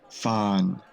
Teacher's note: has a mid initial pitch which falls to a low pitch making it a mid falling tone